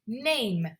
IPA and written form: neɪm (Name)